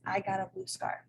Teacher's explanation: the atonic syllable would be scarf which is the last syllable in the first intonational phrase